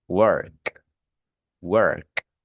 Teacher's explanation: fíjense que la K es voiceless, no vibra, ¿vale? Las cuerdas vocales no vibran y como no vibra, cuando usted vaya a transformarlo en pasado simple, va a decir worked, worked, worked.